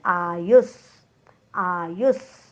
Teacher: आयुस आ दीर्घ आहे, यू नंतर विसर्ग आहे, विसर्गाच्या पुढे आलेला आहे स.